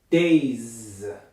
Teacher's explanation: I'm exaggerating, producing the z for far longer than I have to.